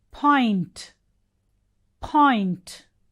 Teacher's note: p, it is an aspirated p.